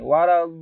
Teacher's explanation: Di sini madu lazim. Panjangnya harus 6 harokat.